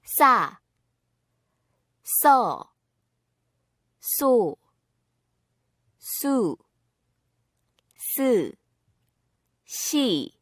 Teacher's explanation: Doubling 시옷 makes 쌍시옷. 쌍시옷 is pronounced like 시옷, but with more stress on the vocal cords. It also has a higher tone.